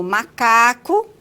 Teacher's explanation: o ar ele vai passar pela narina e por isso que é consoante nasal · o M, que é a consoante nasal bilabial, no início de sílaba, como macaco